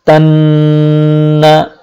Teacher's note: নাকের ভেতর দিয়ে আওয়াজ আসবে, নাকের ভেতর দিয়ে আওয়াজটা আসবে এবং এক আলিফ পরিমাণ লম্বা করতে হবে। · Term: গুন্না